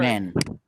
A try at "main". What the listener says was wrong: Not men, see? It's not men. It's main.